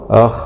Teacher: خاء سكون مع الهمس والرخاوة